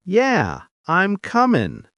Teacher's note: Coming loses the final G and becomes comin'.